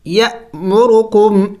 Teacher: حمزے کے اوپر جب سکون آ جائے، تو تب حمزے کو جھٹکا دے کے پڑھا جاتا ہے